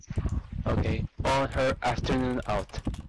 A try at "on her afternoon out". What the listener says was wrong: Yeah, that's it.